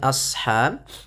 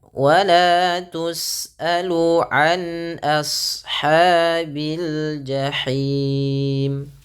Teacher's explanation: ketika melafalkan ashab, a-nya tipis, shadnya tebal